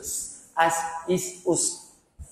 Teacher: Sin, huruf safir, bunyinya bersiut.